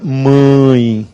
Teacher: Agora, eu coloco o tio, o som fica mãe, nasal.